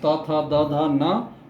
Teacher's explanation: ये जो है दांतों से टकराते हुए आवाज़, जीभ का छूना हो रहा है और आवाज़ निकल रही है, तो इसलिए इसे दंत्य स्थान या दंत्य वर्ण के नाम से इसको हम जानते हैं।